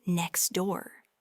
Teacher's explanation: However, when we say it naturally and quickly, you'll often notice that the T sound in next is barely audible, if at all. It just becomes next door.